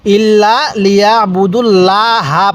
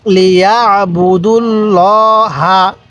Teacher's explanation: এখানে লা হবে না, এই আল্লাহ শব্দের এই যে লামটা আছে না মাঝখানের, এই লামের পূর্বে যদি জবর এবং পেশ দেখেন তাহলে লামটা মোটা করে পড়বেন, পোর করে পড়বেন